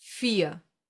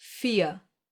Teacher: This is one example for the silent R, the one that gets pronounced like a reduced A and is found in words ending in ER.